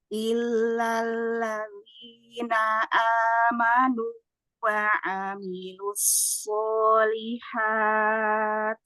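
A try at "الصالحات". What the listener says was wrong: Tak sukun di ujung. Solihat.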